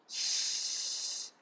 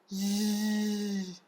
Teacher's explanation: para a gente falar essas consoantes, o ponto de articulação é o palato